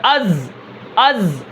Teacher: اسی طرح حمزہ زا زبر از، از، سانس ختم ہو گیا، آواز کے اندر بلندی ہے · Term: جہر